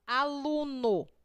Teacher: Por exemplo, aluno. Lu na palavra aluno tem mais intensidade. Quando a penúltima sílaba é tônica, classificamos a palavra em paroxítona.